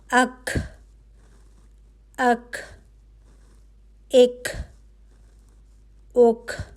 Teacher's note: اب کا کے لیے آپ کی زبان کی جڑ لگ رہی ہے سخت تالو پہ، جو نرم تالو کے فوراً بعد ہے۔ ٹھیک ہے، وہاں سے ایک حرف ادا ہو رہا ہے اور وہ ہے کا۔